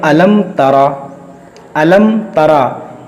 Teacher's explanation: हम यहां गुन्नाह नहीं करेंगे, हम इसे अलम-न-तारा की तरह नहीं पढ़ेंगे। · मीम साकिन के बाद हर्फ बा और मीम के अलावा कोई भी हर्फ आ जाए तो मीम साकिन में इजहार शफ़वी होगा, यानी गुन्ना नहीं करेंगे।